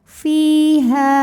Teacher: Fi, juga mad thabi'i dzahiri, karena ada ya sukun sebelumnya berbaris kasrah. Maka huruf fa panjang dua harakat.